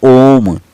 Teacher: एक तो देखिए लघु होता है जिसमें सबसे कम लग यानी ना के बराबर समय लगता है, और एक दीर्घ होता है जिसमें लघु की 2 गुना समय लगता है, और एक ऐसा होता है जो दीर्घ से भी जो है ज़्यादा समय लेता है, उसको प्लुत स्वर बोलते हैं